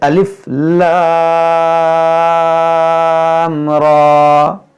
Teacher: یہاں پر پڑھیں گے الف لام کھینچ کر، کیونکہ یہاں پر مد لازم ہے، کیونکہ لام میں جو مد ہے وہ مد لازم ہے، اور یہاں را پر کھڑا زبر ہے تو اس کو کھینچیں گے، لام کو زیادہ کھینچیں گے، را کو تھوڑا کم کھینچیں گے